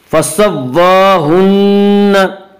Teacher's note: खड़ा ज़बर को एक अलिफ के बराबर खींच कर पढ़ेंगे।